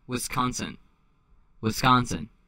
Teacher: And you have to nasalize. That O is not an O. It is a nasalized A.